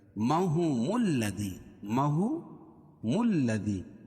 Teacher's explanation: میم کو لام میں ملائیں گے · لام کے اوپر تشدید ہے اور تشدید والا حرف سختی کے ساتھ پڑھا جاتا ہے اور 2 مرتبہ. اور یہاں حروف شمسیہ بھی ہے.